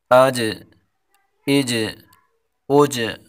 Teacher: حمزہ جیم زبر اج، جیم حروف قلقلہ، اس میں قلقلہ کریں گے۔ حمزہ جیم زبر اج، حمزہ جیم زیر اج، حمزہ جیم پیش اج۔